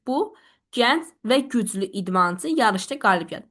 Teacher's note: Sadalama intonasiyası ilə bunu deyirsiz.